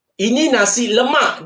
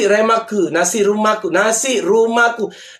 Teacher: Dia tak ada L, tak ada sebut.